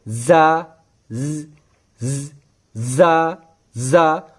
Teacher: जो जुबान की नोक होती है वो सनाया सुफला के साथ टच हो जाती है ज अदा हो जाता है तो पहले हमें सनाय उलिया और सनाय सुफला को करीब लाना